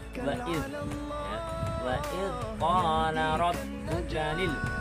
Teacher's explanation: Untuk dal sendiri itu posisi lidah itu adalah di ujung gigi seri atas. Lebih tepatnya adalah antara gusi dan gigi seri atas.